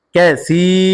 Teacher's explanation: হবে মাদ্দে তবাই কাফ জবর কা সা ইয়া জের সি কাসি জেরে পরে ইয়া সাকিন মাদে হরফ এক আলিফ টান হবে মাদ্দে তবাই